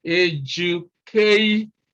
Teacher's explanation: All right, so another name for word stress is syllable stress, because, you know, when we look at the word education here, all right, then you can see that we have 1, 2, 3, 4 syllables, all right? And then stress is placed on this third syllable from the beginning, which is the second syllable from the end of the word